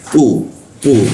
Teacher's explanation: Di sikut tenggorokan dia ee lidahnya diangkat sehingga rumbara terkunci. Tidak ada hembusan udaranya.